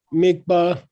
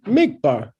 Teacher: if you accent the first syllable mikbah it means the verb uh to to focus on something if you say both syllables with equal accents actually means the object of focus